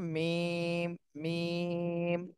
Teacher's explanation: ঠোঁটের শুকনা অংশ থেকে